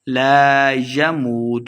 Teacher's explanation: واو مدہ ہے, دو حرکات لمبا کر کے پڑھیں گے. فیہا یا مدہ ہے, دو حرکات لمبا کرنا ہے.